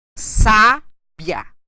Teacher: Na penúltima sílaba e tenho a última sílaba num ditongo crescente.